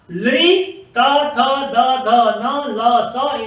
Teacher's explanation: लृ, त, थ, द, ध, न, ल, स, इनको हम दंत वर्ण कहते हैं, इनका उच्चारण स्थान दांत है